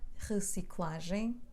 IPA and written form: ʀə - si - kla - ʒɐ̃j̃ (reciclagem)